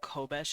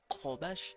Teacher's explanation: it's like a k but further down the throat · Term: a q